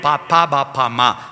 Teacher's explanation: ചുണ്ട് കൂട്ടി തുറന്നിട്ട് വ്യഞ്ജിപ്പിക്കുന്ന ഓഷ്ടം ചുണ്ട് ഓഷ്ട്യം പാപ്പാ ബാപ്പാമ്മ.